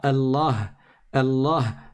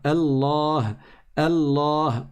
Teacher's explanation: On ne dit pas Allah, Allah sans prolonger, mais on doit dire Allah, Allah, on prolonge. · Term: la prolongation